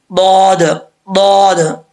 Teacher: दाद का मखरज है जुबान का लेफ्ट वाला हिस्सा, यानी उल्टी साइड वाला जो हिस्सा है जुबान का किनारा